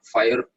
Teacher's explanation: The I in the British pronunciation of the word fire is an example of a triphthong.